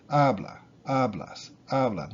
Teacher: They end in a vowel or an S or an N, so it's the second to last syllable, second to last vowel.